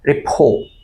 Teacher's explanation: এখানে আর এর উচ্চারণটা সাইলেন্ট হয়ে যাবে।